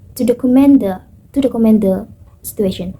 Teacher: I also use falling intonation to show uh completion